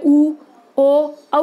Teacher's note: उ, ओ, औ का उच्चारण करते हैं तो हमारा मुख थोड़ा थोड़ा वृत्त की तरह होता है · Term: वृत्तमुखी